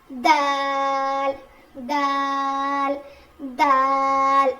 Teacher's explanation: जुबान की नोक को सामने के दो दांतों के किनारे जड़ में लगाने से दाल अदा होता है।